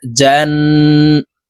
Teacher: এই জিম তাশদি নুনের সাথে গুন্না সহিত পড়বো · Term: ওয়াজিব গুন্না